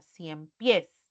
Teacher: Si yo junto 100 y pies, voy a pronunciarlo como una sola palabra, 100 pies. Recae en la última sílaba